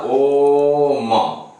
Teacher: तो इसमें 3 मात्रा तक खींचना है ओ को, उसके बाद म बोलना है, तो इसलिए ओम हो गया। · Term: प्लुत स्वर